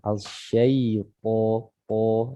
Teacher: Kemudian po-nya dibaca tebal, ya. Po makhrajnya itu dari ujung lidah bertemu dengan pangkal gigi seripan atas